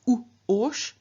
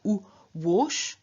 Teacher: And in the case of the strong stem of ush, we have not u-osh, but we have u-wosh. So a w has been inserted, which is the semi-vowel counterpart of u.